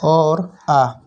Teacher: पहला स्वर होता है कंठ। कंठ से बोला जाता है अ और आ